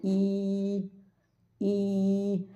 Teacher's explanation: automatical ആയിട്ട് നമ്മുടെ നാവിന്റെ സെൻട്രൽ പാർട്ട് അങ്ങ് ഉയരും നാവിന്റെ നടുഭാഗം ഈ അണ്ണാക്കിലോട്ട് അണ്ണാക്കില തൊടൂല കട്ടോ ക്കെ കണ്ണാക്കിൽ തൊടുല പക്ഷെ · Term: യാമദ്ദ്